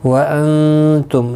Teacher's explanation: وانتم، نون ساکن کے بعد حروف اکفا کا تا آیا ہے، اخفا حقیقی ہوگا، گنہ کے ساتھ پڑھیں گے